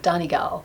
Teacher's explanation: Donnie gal with the stress on the second syllable and Donnie as the kind of first pitch that's like Donnie